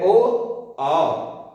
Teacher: इसका उच्चारण कंठ और ओष्ठ से, इसीलिए इसका नाम है कंठोष्ठ